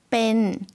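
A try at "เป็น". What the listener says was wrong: 좀 짧게 발음해 주시면 되겠습니다. 뺀이라고 천천히 지금 발음해 주셨는데요.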